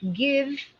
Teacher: way to pronounce it so the word g-i-v-e give right give the V actually has a buzz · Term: v sound